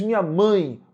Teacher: O E é semivogal porque tem som de I